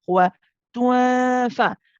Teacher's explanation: It's again with a light gunna because the fa is a light letter. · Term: ikhfa haqiqi